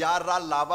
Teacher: सघोष हैं, यानी घोष हैं, इनको बोलने पर स्वर तंत्रियों में कंपन होता है